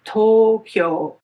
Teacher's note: It's Tokyo, which has two syllables. In Japanese, however, both vowels are lengthened, so there are four moras.